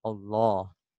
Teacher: Allah itu tebal disebut dengan lam tafkhim